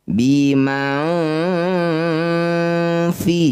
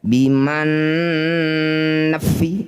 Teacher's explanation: Saat dengung lisan kita sudah bersiap bunyikan fa ya. ujung gigi atas sudah nempel di bibir bawah perut bibir bawah bim fi jangan bertahan di nun makanya disebut ikhfa samar tidak boleh biman nafah akhirnya seperti itu ya jadi makanya disebut ausat juga di tengah-tengah antara nun sukun dan fa biman wal ardhi.